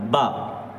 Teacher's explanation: دونوں ہونٹ جب ملتے ہیں تو با نکلتا ہے،